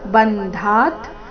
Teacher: ಬಂಧ ಧಾ ಮಹಾಪ್ರಾಣ ದೀರ್ಘ ಆದ ನಂತರ ಅರ್ಧ ತಕಾರ